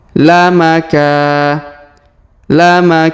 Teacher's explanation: huruf ka kita panjangkan dua harakat karena Alif di depannya